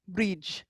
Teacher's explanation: It's Bridge, not Breed, not Bridie. Bridge, because that D is sitting next to a slender I, so it sounds like a J sound